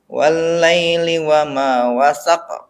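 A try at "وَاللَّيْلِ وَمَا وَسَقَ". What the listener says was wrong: Ya, gitu.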